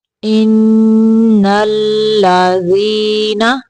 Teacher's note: ان پہ نون مشدد کا غنہ ہوگا، آواز ناک سے نکالیں گے